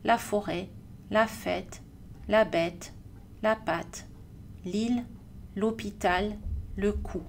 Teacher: on a arrêté de prononcer le S et on a rallongé la voyelle pour prendre la place vide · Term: l'accent circonflexe